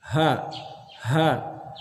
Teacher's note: bukan di dada tapi di tenggorokan paling bawah